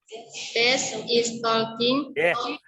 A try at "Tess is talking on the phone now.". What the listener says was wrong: Tadi kan sudah saya bilang L-nya nggak dibaca, talking ya. Ulangi lagi.